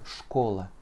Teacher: Donc mon dernier a se prononce presque comme un e.